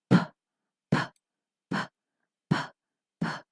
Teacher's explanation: it's a voiceless sound you just need to push out the air from your mouth and say the sound of letter P that is